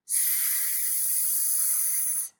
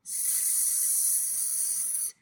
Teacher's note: There is nothing happening in your larynx, no voice is produced. But as the air is coming out of your mouth, we make a narrowing here s, to make this sound. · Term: voiceless consonants